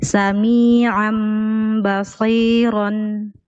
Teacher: Ain tanwin bil fathi munqalib li mimin mukhfa 'indal ba'il maftuha bil ghunnah harakatain